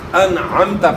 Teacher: عین کو حمزہ سے تبدیل نہیں کرنا. انعمت آپ نے پڑھا تو پھر عین حمزہ سے تبدیل ہو جائے گا.